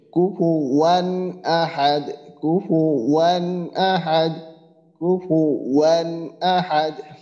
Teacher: গুন্না করতেছি না বা এরকম নাকের ভিতরে আমরা নিতেছি না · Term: স্পষ্ট করে